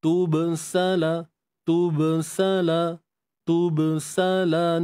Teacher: Ba yang suku ni qalqalah sughra. Nantunan kecil je sini.